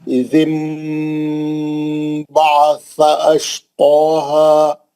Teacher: इज़िम बअसा में नून साकिन के बाद बा है, एक ही कलमे के अंदर मीम लिखा हुआ है छोटा, तो वो जो नून की आवाज है उसको मीम से बदलकर गुन्ने से पढ़ेंगे